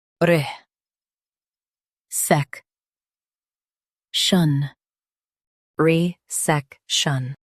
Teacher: Stress s e k and keep re soft.